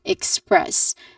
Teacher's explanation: This the second syllable is the stressed syllable, express. And then followed by a schwa sound.